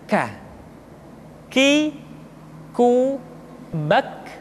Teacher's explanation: Selanjutnya huruf K diucapkan dengan mengangkat pangkal lidah kita ke posisi di depan huruf qaf. K diucapkan dengan mengalirkan nafas kita.